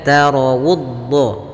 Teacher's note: sempurnakan dhammahnya, dimajukan sedikit bibir kita monyong untuk menyempurnakan huruf waw yang berharokat dhammah